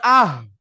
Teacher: প্রথমে আছে কি হামজা, প্রথমে আছে হামজা হা, তো হাটাকে আপনি এখানে দিলেন, হাটাকে আপনি এখানে দিলেন, হাটাকে এরকম দিলেন, হার উপরে কি সাকিন রইল, তো হামজা হা যাবার আহ, হামজা হা যাবার আহ, তো গলার শুরু অংশ হইতে হাটা উঠে আসছে